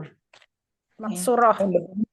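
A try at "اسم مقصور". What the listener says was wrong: Jangan maksura, isim maksur tadi kan baca, udah dibaca tadi kan. Isim maksur.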